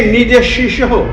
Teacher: देखिए, निज शिशो नहीं, निज शिशो, निज शिशो विसर्ग है ना, विसर्ग का उच्चारण ह के आधे ह के समान होगा और ओ की मात्रा के बाद में है, इसीलिए निज शिशो।